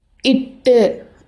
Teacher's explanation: காற்று வெடித்து வாய் வழியாக வெளியேறும். இது வெடிப்பொலி.